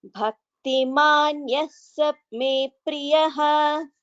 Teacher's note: Because yaha and sa, visarga followed by sa becomes visarga sakara sandhi